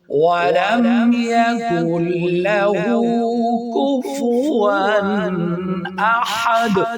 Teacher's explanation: وقف کی وجہ سے دال کے اوپر جو تنوین تھی وہ ختم ہو جائے گی اور دال کو ہم ساکن کریں گے اور ساکن ہونے کی صورت میں اس کو قلقلہ بھی اس پر ہو جائے.